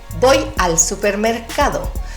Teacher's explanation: En plano, como tú lo dirías normal, y en versión femenina, con melodía, subiendo al final, más ligera. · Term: entonación